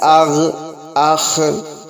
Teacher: غین خا حلق کے منہ کے جانب والے حصے سے ادا ہوتے ہیں